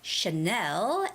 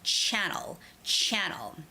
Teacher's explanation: so channel is the first syllable stress word